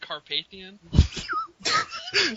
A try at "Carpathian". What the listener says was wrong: Is there an H in my last name? Do you see an H? It's like you totally nailed the pronunciation of my first name, but you just butcher the English language in the last name. Yeah, you hit the nail on the head on the first name.